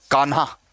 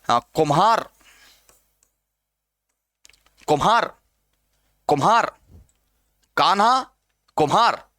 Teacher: एक बार आप इतना जान लीजिए कि न, म, र, ल इनके महाप्राण रूप विकसित हो गए।